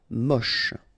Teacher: Don't insist on the final E, then you get the last sound is sh.